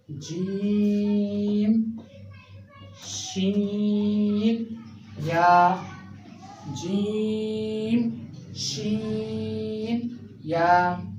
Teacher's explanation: तो ये अदा होते हैं ज़बान का दरमियान और ऊपर के तालु से। मिसाल के तौर पर ज़बान आपकी ये है और ये आपका ऊपर का तालु है।